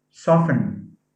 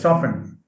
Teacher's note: soft has a t as a phoneme but soften has a silent t